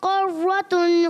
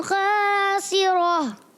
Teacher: कर्रतुन में काफ को बारीक रखना है, खासिरा में खा को पुर रखना है। ये थोड़ा सा काफ को बारीक और खासिरा में खा को पुर।